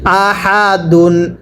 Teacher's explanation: এরকম হা গুলো উচ্চারণ করার সময় গলার মাঝখান থেকে বাতাস বের হবে · তানবিনের উচ্চারণটা বাংলায় শেষে দন্তন না উচ্চারণ হবে